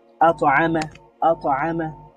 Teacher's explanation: যদি শব্দের মাঝখানে থাকে তাহলে এটা খুবই খুবই সহজভাবে কলকলাটা হয় এবং খুবই দুর্বল কলকলা হয়